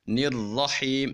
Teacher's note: اب چونکہ را مشدد ہے اور را کے اوپر زبر بھی آ رہی ہے تو را کو موٹا بھی پڑھیں گے